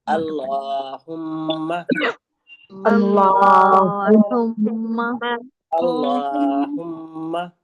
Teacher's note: لام پہ لام کی ادائیگی کریں گے، لیکن یہ لفظ اللہ کا لام ہے اور حمزہ پہ زبر کی حرکت ہے تو ہم اس کو موٹا پڑھیں گے · حمزہ کی ادائیگی کریں گے، عین کی نہیں کریں گے. اللہم، ٹھیک ہے، حمزہ سے کریں گے.